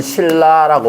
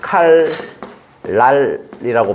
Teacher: 그래서 역행이라고 하고, 칼, 날 같은 경우에는 칼 할 때 리을이랑 요 니은이 앞에 리을의 영향을 받아서 니은이 리을로 바뀌는 거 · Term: 유음화